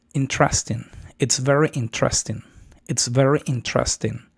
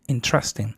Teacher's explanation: O sea, tienes que pronunciar interesting. O sea, sube en, luego baja en tras y luego ten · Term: sílaba tónica